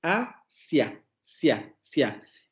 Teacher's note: Luego vamos a tener lo mismo con Asia, solamente que aquí esté invertido el orden. Mira, en Asia tenemos primero una vocal cerrada anterior no labializada, y luego tenemos la vocal abierta anterior no labializada. No importa, aunque tengamos ese orden, vamos a agruparlas porque forman un diptongo.